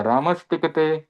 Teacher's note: अब ये स हलंत है और इसके सामने है ट वर्ग। तो यह स्तुभस्तु सूत्र है वो बोलता है कि इस स दंत्य स का मूर्धन्य स बन जाएगा